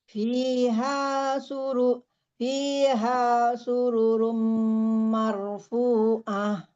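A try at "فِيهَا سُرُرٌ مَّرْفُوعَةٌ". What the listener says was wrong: Jangan dipanjangkan. Langsung. Fiha sururum marfu'ah.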